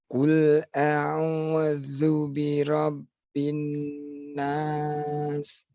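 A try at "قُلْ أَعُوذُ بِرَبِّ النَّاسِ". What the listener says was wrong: Itu terlalu Pak. Huruf dzanya terlalu kuat itu. Jadi kayak zu bira, zu, jangan ditekan, ditempelkan saja. Qul a'udzu dzadzi dzubal. Zu.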